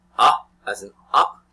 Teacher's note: the mouth is open really open and the sound comes from the back part of the mouth